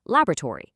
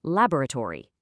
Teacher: A North American speaker is probably going to compress it into three syllables